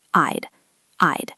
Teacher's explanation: Listen to the sound, I'd, I'd. It is a long I sound followed by a very soft duh sound